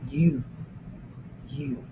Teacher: The lips are coming together, almost in a circle, but not quite.